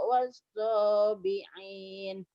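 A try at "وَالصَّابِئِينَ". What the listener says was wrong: Jangan bi'in. Bi'in. Hamzah ya. Bukan ain. Wasabiin. Bi'in.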